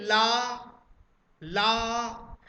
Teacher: दोनों पार्श्व भागों पर कुछ कंपन होता है, इसलिए इसको ला को पार्श्विक वर्ण भी कहा जाता है।